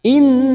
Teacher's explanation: nun yang bertasdid gunna musaddadah kita dengungkan dan ditahan selama 3 harokat